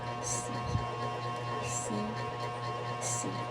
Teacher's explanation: Spread wide, like [music] a smile. Tongue high and forward in the mouth. Sound is long and steady.